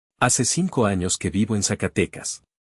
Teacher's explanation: This should be straightforward if you are an English speaker, because English does not have the Castilian TH sound for C and Z either. Just make sure that every C before E or I, every Z, and every S all sound the same. A clean S.